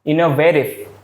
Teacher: Biasanya di American English itu tetap, misalnya ya, kalau contohnya kata ini innovative. Di American English, innovative itu tidak reduce, tidak dikurangi.